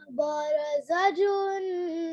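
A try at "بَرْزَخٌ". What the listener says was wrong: बरज़जुन, जीम का नुक्ता कहाँ?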